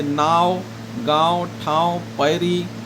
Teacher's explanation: इकर उच्चारण करे पहर मुंह से बेसी सांस निकसेला, नाक से कम, यानी मुंह से ज़्यादा सांस निकलता है और नाक से कम अनुनासिक में निकलता है